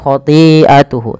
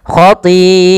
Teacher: Maka apabila ada hamzah datang setelah huruf mad, maka ia dinamakan dengan mad wajib muttasil bila hamzahnya pada satu kata. Maka panjangnya kita panjangkan 4 harokat dan tidak boleh dikurangi, karena dia wajib. Khoti'ah, ya, jangan khoti'atuhu, tapi panjangkan dulu.